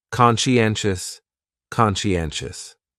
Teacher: conscientious has four syllables and the stress is on that third syllable n conscientious conscientious that second syllable is what really confuses people